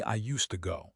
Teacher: When a D is followed immediately by a T like in used to, the sounds merge. The D is lost. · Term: assimilation